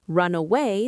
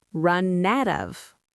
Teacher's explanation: >> With run, the N sound is so strong that it usually eats the next word. Run away sounds like run and away.